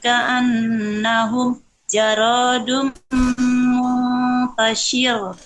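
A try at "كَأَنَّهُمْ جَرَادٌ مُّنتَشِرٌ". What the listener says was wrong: Enggak ditekan. Enggak ada tasdid. Biasa saja. Muntashir.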